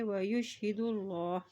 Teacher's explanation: دال کی پیش کو اللہ کے نام کے ساتھ ملاتے ہوئے پڑھیں گے